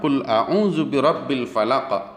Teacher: huruf qaf yang dibaca berbaris sukun di akhir dibaca Qalqalah Kubro